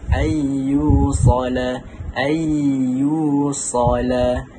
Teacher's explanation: Huruf ya itu adalah huruf idgham ma'al gunnah, jadi dia memasukkan dengan mendengungkan bacaan dengan kadar 2 harakat.